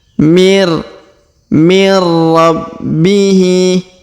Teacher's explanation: Huruf nun sukun bertemu ra, maka nun sukunnya menghilang melebur ke huruf ra bertasdid